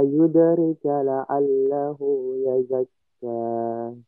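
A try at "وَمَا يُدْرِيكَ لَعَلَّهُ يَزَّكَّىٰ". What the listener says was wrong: Baik, dari ri-nya panjang, kemudian yazzakka itu ada 2 tasydid. Yazzakka ada 2 tasydid. Wa ma yudri, ri-nya panjang. Wa ma yudrika la'allahu yazzakka. Bukan yazakka, tapi yazzakka. Ada 2 tasydidnya. Yang pertama tadi diperbaiki di yudri, ri-nya panjang 2 harokat. Wa ma yudri, wa ma yudrika la'allahu, hu-nya panjang 2 harokat. Yazzakka ada 2 tasydid. Yazzakka bukan yazakka.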